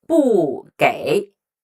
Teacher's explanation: It followed by a third tone character. It doesn't change.